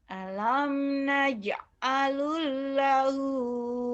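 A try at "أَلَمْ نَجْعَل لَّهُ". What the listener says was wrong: Jangan lu. Itu lam mati ketemu lam hidup yang kemarin dipelajarin. Alam naj'al lahu, bukan naj'alul.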